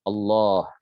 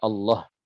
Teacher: wajib dibaca dengan mat, wajib dibaca dengan panjang minimal 1 alif atau dua harokat